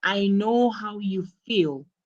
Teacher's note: you have to notice the emphasis on feel